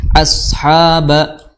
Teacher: Ba makhrajnya adalah di kedua bibir, ba harus bertemu · Ha di pertengahan tenggorokan, ya, makhrajnya sama seperti huruf ain.